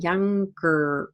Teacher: With a sound like younger, the schwa and the R really become one sound. They happen simultaneously.